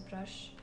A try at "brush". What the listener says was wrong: Так, у тебя опять таз. Туз. Да. Ты привыкла говорить таз.